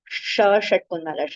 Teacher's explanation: sh where we touch our tongue to the hard portion of our pallet